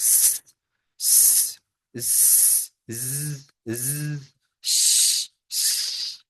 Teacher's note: making air go through small gap with friction like ज ज तो यह साउंड इस तरह प्रोड्यूस होते हैं